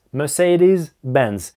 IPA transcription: mɜːˌseɪdɪz'benz